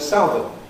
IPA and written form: ˈsaʊðən (southern)